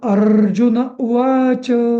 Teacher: उ ला एक मात्रा वा ला दोन मात्रा च ला जरी ते लहू असलं तरी दोन मात्रा वाच अ